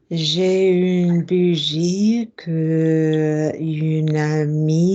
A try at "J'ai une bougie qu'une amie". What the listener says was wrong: At your stage now, guys, we should be linking k and un and k and il and k and l quite naturally.